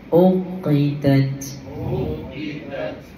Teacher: Ta di hujung jadi hams juga ya nipiskan huruf ta